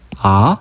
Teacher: 2성은 아 하고 올라가는 성조